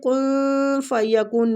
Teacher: نون ادھر اخفا کے ساتھ پڑھیں گے، نون کو چھپا کے، اخفا حقیقی ہو رہا ہے